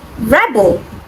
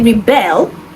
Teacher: Rebel is someone who rises in opposition and the stress is on the first syllable. But when I say rebel, the stress is on the second syllable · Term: stress shift